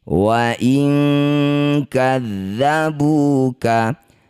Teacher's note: Nun sukun bertemu kaf atau qaf disebut bacaan namanya ikhfa, tepatnya yaitu ikhfa ab'ad. Bunyi nun ganti jadi eng, dengung dua harakat.